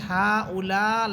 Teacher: লামের মধ্যে এখানে 4 আলিফ টান আছে, 4 আলিফ টান হবে এবং হামজাকে ধাক্কা দিয়ে পড়বেন, অর্থাৎ হামজা যেহেতু সাকিন হইতেছে, সাকিন অবস্থায় হামজাকে ধাক্কা দিয়ে পড়তে হয়, হা উলা, এভাবে।